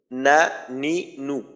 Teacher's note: জিহ্বার আগা তার বরাবর উপরের তালুর সঙ্গে লাগাইয়া উচ্চারিত হয়